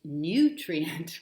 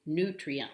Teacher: their pronunciation is nutrient with a little y stuck in there